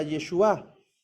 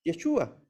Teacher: El nombre del Mesías, Yeshua, con acento en la U, que significa Él salvará.